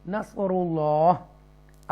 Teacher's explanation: हाजिर ही जो है, हा कसरा ही जो है वो नहीं पढ़ेंगे, क्योंकि एंड पर लफ्ज़ जो है वो साकिना हो जाएगा, तो नस्रुल्लाह पढ़ेंगे। तो अल्लाह को तफ़कीम के साथ पढ़ेंगे